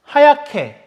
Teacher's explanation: 히읗 플러스 기역이네요. 그게 키읔으로 되네. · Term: 거센 소리